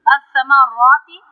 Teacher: را کو ہم تفخیم کریں گے اور لمبا کریں گے